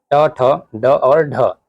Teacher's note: ये जो है मूर्धन्य ध्वनियां हैं, ट, ठ, ड और ढ